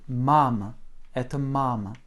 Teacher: cette première syllabe est très accentuée, tandis que la deuxième se prononce presque comme m. C'est presque un e derrière. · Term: accent tonique